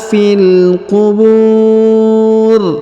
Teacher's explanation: Bu terdapat wau sukun atau w mati sebelum huruf pemberhentian dan huruf pemberhentian huruf RI disukunkan atau dimatikan ya